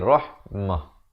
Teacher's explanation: Dan bila kita pilih untuk waqaf di sini, ta marbutah, ta simpul ditukarkan kepada bunyi ha. Daripada rahmatin jadi rahmah.